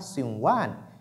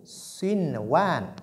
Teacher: Donc, sinwan, il y a nun, as-sakin, il y a waw. Mais comme c'est dans le même mot, on ne doit pas donc faire ce qu'on appelle al-idgham, la fusion.